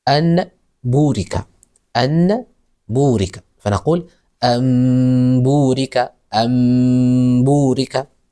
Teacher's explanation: قلب النون الساكنة والتنوين ميما مخفاة مع غنة، مع مراعاة الغنة أو مع غنة إذا أتى بعدها حرف الباء. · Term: القلب